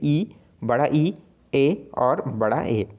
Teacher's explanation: तो अग्र में कौन आएगा, तो जीवा के जो आगे भाग में से उच्चारित होने वाले जो स्वर हैं वो क्या कहलाएंगे, अग्र स्वर कहलाएंगे